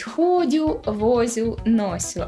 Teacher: д т з с не чергується із шиплячими тому часто виходить ходю возю носю а не ходжу вожу ношу